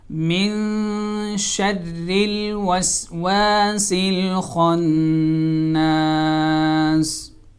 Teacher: من نون کے اوپر غنہ ہوگا اور ناک سے آواز ادا کی جائے گی